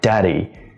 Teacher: Daddy, the D at the beginning of the word is different from the D in the middle of the word because, the first D or da, the first syllable has stress and the second syllable doesn't have stress